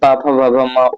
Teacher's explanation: प फ भ म ओठ से है। ओष्ठ से आप उच्चारित करते हैं।